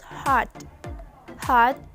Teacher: hot is consist of long vowel ah as the peak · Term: strong syllable